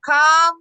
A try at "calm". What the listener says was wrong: Calm. Calm. No, jangan sebut L. Calm. Calm.